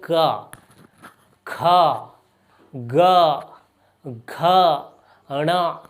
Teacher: क हो रहा है हमारे कंठ से, क या कंठ आपको नजर आ रहा है, यहाँ जोर पड़ रहा है, और यहीं से हमको पता चल रहा है क यहाँ पर।